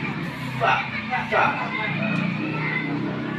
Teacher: Bibir bawah bertemu gigi seri atas, yaitu huruf fa, ya, fa. Kemudian bibir bulat, ya, udara keluar.